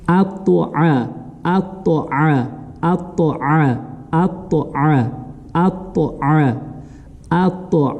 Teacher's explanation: А буква айн, она гортанная. Соответственно, вот эту фатху мы должны уже через гортань или с помощью гортани произносить.